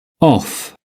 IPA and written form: ɒf (off)